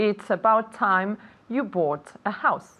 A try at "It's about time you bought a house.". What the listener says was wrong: Good, one more time.